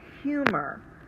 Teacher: The first syllable, hu, is the accented syllable, or the syllable that we say a little bit stronger. It's open because it ends with a long U sound.